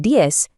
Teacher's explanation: The Z sound at the end of diez often sounds just like a soft S in many Spanish-speaking regions